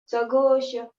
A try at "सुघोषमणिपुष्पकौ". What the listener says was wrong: सुघोष है, सघोष नहीं, सुघोष है। अक्षर को बिल्कुल ऐसे ध्यान से देखना चाहिए।